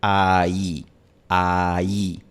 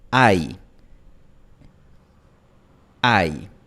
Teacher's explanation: No se pronuncia como dos vocales en dos sílabas. Se pronuncia en una sola sílaba. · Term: diptongo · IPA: [aj]